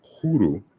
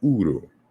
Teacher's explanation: it corresponds to Zande Huru, sun, and then the H is dropped. It's Uru, sun.